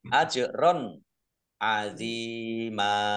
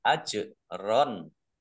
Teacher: Jim sukun bacaan kolkolah, dibaca memantul, ditampakkan pantulannya.